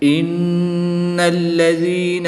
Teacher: نون مشدد میں غنہ کر کے پڑھیں گے